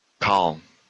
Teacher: It's very deep and it also comes from the back of your mouth.